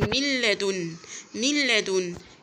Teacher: دخلت النون في اللام ونطقت الحرف التاني مشدد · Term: إدغام